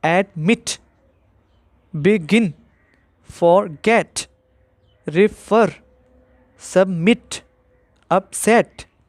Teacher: इन तमाम वर्ब्स में जो लास्ट सिलेबल है उसमें स्ट्रेस आ रहा है